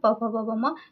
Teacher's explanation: जैसे प प ब पढ़ने पर प प ब म यानी इसमें होठ सट रहा है